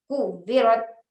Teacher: یہاں پر حرف واو کے اوپر چونکہ تشدید آئی ہے اس بنا پر ہمیں یہاں زور دینا ہے یعنی پریشر دینا ہے، ایسے پڑھنا ہوگا کو ویرت، ٹھیک ہے۔